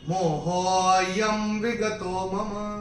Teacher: इसमें विलुप्त अ होता है, तो हो को हम थोड़ा सा खींच के बोलेंगे जिससे कि अ निकल के आए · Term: अवग्रह